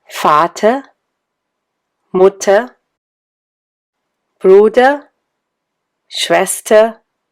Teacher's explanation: Many words end in er, but one speaks a sound between a and e. In any case, you don't hear an r.